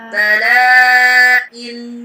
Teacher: ketika tanwinnya itu dilafalkan ya, maka koisyum kita itu ikut bergetar ya